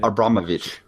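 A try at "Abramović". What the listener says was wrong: That C is actually pronounced. It's actually pronounced ch. You sometimes see names with the C or the CH, and the H is trivial. It doesn't matter. They're pronounced the same.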